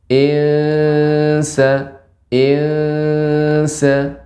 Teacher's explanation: Lidah Tidak menempel di langit-langit seperti mau menempel enggak jadi menempel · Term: ikhfa